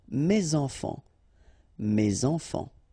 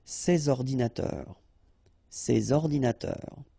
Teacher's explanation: And in that case, I took the plural form, so these here, and then ordinateur, computers. So you should make the liaison between S and O